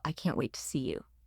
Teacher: Heavy stress on the combined idea of can't wait.